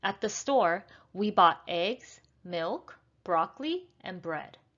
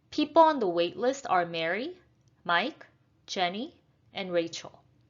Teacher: When you are reading a list of something, whether they are nouns or phrases or verbs, when you're reading a list of 3 or more things, we're going to use rising intonation for everything on our list, except the last one. So we're going to have rising and then falling intonation.